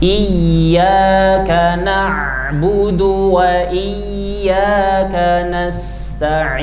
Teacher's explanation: Ya bertasydid perlu ditekan nabr perlu ditekan suaranya supaya menunjukkan bahwa di situ terdapat tasdid. Jangan di flatkan suaranya jangan didatarkan.